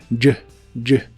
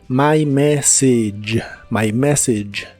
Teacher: el sonido J que usas para las palabras George y suena como una ch pero vibrante